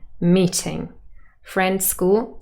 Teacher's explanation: meeting has two syllables we would stress the first one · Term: tonic stress